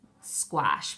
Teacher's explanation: Be careful that A says ah, almost like an O.